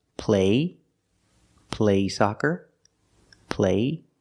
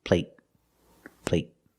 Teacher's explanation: But the stop T at the end makes the long A a little shorter.